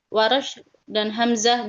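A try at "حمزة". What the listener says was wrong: Pakai H bukan Hamzah ya.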